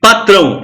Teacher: o som do a é muito mais forte que o som do o. Isso aqui quase morre.